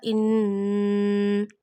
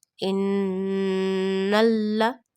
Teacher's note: you take noon sound into the nose and stretch up to one alif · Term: Gunna of Noon Mushaddad